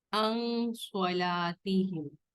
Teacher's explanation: نون ساکن کے بعد صاد آیا ہے تو اخفاء کریں گے